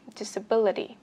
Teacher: trọng âm thì vẫn phải nhấn vào âm tiết thứ 3 là âm B cho mình.